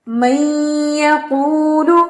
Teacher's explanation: نون جو ہے مکمل طور پہ یا کے اندر مرج نہیں ہوا بلکہ اس نے اپنی ایک صفت غنہ والی باقی رکھی ہوئی ہے، اس لیے یہ والا کہلائے گا، من یقول والا کہلائے گا ادغام ناقص.